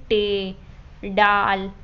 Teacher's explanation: और फिर उसके बाद है माकूसी, तो माकूसी इसमें ज़बान की नोक जो होती है वो ऊपर की ओर होकर पीछे की तरफ मुड़ती है और फिर तालू की तरफ छूती है। मसलन उर्दू में जो लफ्ज़ आते हैं जैसे टे, डाल, इन आवाज़ों में ये माकूसी आवाज़ें होती हैं।